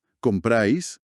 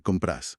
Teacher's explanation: ese diptongo de la A y la I, se va desgastando, se monoptonga, se funde por pura comodidad al hablar rápido y pasa a ser simplemente compras.